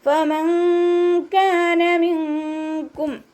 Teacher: ഫ ലൈറ്റാക്കിയിട്ട് ഉച്ചരിക്കുക. നമ്മുടെ മേലെ മുൻപല്ലിൻ്റെ അറ്റം താഴെ ചുണ്ടിൻ്റെ ഉൾവശത്ത് വെറ്റായ ഭാഗത്ത് വെക്കുക കേട്ടോ. നൂൻ സാക്കിനയ്ക്ക് ശേഷം ഇഖ്ഫാൻ്റെ ലെറ്ററായിട്ടുള്ള കാഫ് വന്നു.